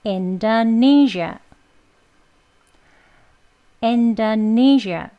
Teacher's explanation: 여기가 1강세, 세 번째 음절 니라는 데를 가장 강하게 해주시고요 · 두 번째에 강세가 있는 음절이 있습니다. 제2강세, 여기 in, 인도 강세가 약하게 있고요. 여기가 가장 강하게 해서 Indonesia가 되는 거예요.